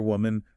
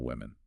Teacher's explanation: The spelling only changes at the very end from an A to an E, but the pronunciation actually shifts on the first vowel sound.